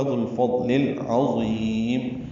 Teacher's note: عین وسط حلق سے ادا ہوگا